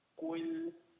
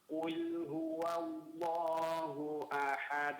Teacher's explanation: Ayat yang pertama lamnya lebih ditipiskan. Qul huwallahu pada huruf e pada kata qul lamnya ditipiskan coba.